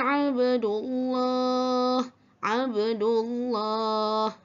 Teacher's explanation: Jadi ini termasuk dalam huruf qalqalah, qalqalah sugra, qalqalah kecil, iaitu mati dengan kadar kecil saja bunyi lantunan dia.